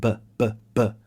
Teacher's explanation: So yes, with the B, you have that explosive pop in your mouth.